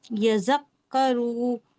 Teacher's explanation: زا کے اوپر تشدید ہے، اس کو سختی سے اور 2 بار پڑھیں گے. ایک بار پہلے والے حرف سے ملا کر پڑھیں گے، ایک بار اس کو خشک کا وجود ہوگا.